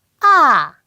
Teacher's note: 가장 높은 음에서 가장 낮은 음으로 쭉 떨어지거든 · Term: 4성